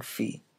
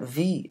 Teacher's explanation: The only difference between fi and v is that for v, the vocal cords vibrate and make a humming sound called voicing. You can feel this by touching your or someone else's Adam's apple and feeling difference between f and v.